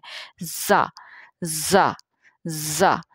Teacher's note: सीटी सी की आवाज़ भी थोड़ी सी आती है इसमें। · दोनों दांत जो है ऊपर नीचे के वो साथ लगते हैं। सख्ती से अदा होता है, दांत बींच कर कह सकते हैं आप। तो दांत बींच कर इस तरह से मिसाल ले सकते हैं कि जैसे जब आपको गुस्सा चढ़ा होता है और आप गुस्से में किसी को डांटते हैं तो आप दांत बींच के जैसे डांटते हैं, तो उसी तरह से ये हरफ जो है वो अदा होता है।